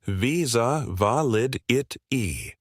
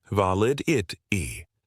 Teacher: Make sure you put the stress on the second syllable of validity.